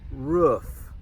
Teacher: some people pronounce it with the short double O sound